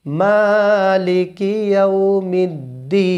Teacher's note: মা এক লিপ টানতে হবে আর শেষে যে দি সেখানে 3 আলিফ টানতে হবে